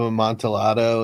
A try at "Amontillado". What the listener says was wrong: It's not Amontillado. It's Spanish. The double L is pronounced as a Y. It's Cask of Amontillado.